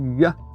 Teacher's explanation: Esse YA é muito engraçado, porque é como o IA, só que é arredondado. Na Bélgica, não existe esse YA.